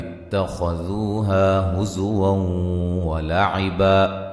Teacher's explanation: زا کو سیٹی سے ادا کریں گے، نون تنوین کا ادغام مع الغنہ ہے